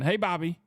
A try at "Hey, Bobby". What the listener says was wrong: Oh, you're saying it too fast. Hey, Bobby.